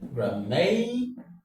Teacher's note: The stress falls on may because may is the penultimate syllable. And in other words, because may is the second syllable from the end of the word.